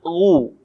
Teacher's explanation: Ketika dhammah baru bibir kita dimonyongkan sehingga keluar vokal U dengan sempurna.